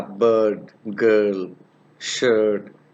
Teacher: in the central part of the vocal tract this vowel is pronounced with the lips in half close and unrounded position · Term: long vowel